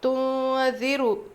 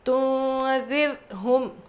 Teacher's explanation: را ساکن سے پہلے زیر، را کو باریک پڑھیں گے، اور یہاں پہ را پہ قلقلہ بالکل نہیں ہوگا